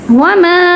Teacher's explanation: तो मद असली और अगला लेटर का स्टार्ट इस वाले हमज़ा से है, तो हमने पहचान लिया कि यहाँ पे जो मद होगी हुरूफ मद्दा पे, इसे हम मद मुनफसिल कहेंगे, ठीक है, यानी 2 सेकंड्स तक इसको स्ट्रेच करेंगे